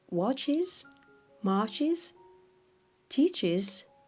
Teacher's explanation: في نهاية الأفعال watches marches teaches الحرف S ينطق is